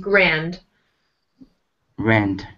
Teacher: make sure you have a D here. Sometimes with Vietnamese, you want to say an S or a Z sound instead of D. But yes. Yeah, make sure you get that D sound.